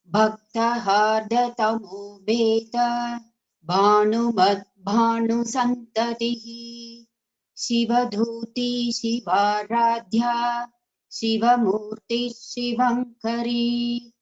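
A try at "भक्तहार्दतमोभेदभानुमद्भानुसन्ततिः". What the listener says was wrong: First line has to be chanted together. Bhaktahardatamo bheda bhanumad santatihi. So we should not take a pause after bheda. So it should continuously should chant this whole thing.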